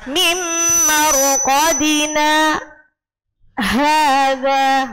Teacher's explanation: Jadi ditahan, enggak boleh mingkem. Mulutnya tetap terbuka ya. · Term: bacaan sakta